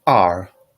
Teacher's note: R is a falling tone.